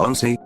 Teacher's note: en la palabra onsei, voz, el acento cae en la parte de on